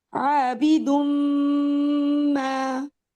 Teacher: یعنی نون نہیں بولا جا رہا, میم بولا جا رہا ہے